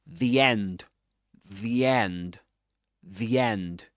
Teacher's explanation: He connects both words. The end of one word to the beginning of the next one.